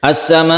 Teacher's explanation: Panjangnya sampai 5 harokat atau 2,5 alif. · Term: mad wajib muttasil